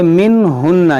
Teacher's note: یہاں نون ساکن کے بعد ہا, یہاں پر اظہار ہوگا